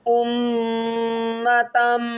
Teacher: میم مشدد ہے، گنہ کریں گے